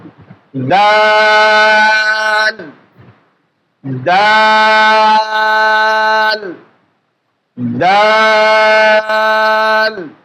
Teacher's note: তো আমরা তা পড়েছি, এখন দাল পড়ব। জিহ্বার আগার সামনের উপরে 2 দাঁতের গোড়া আমরা লেগে দেব।